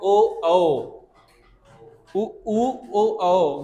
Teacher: जैसे इनसे 4 शब्द बोले जाते हैं, उ ओ, मतलब गोल हो रहा ना चेहरा, मतलब मुंह अपना गोल हो रहा है, बोल के देखो, ओ ओ, उ ओ ओ, गोल हो रहा है ना, पूरा सर्कल टाइप में बन रहा है, तो ओष्ठ की आकृति गोल हो जाती है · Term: वर्तुलाकार